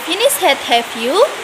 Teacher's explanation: pada question ini intonasinya meninggi yang disebut sebagai rising intonation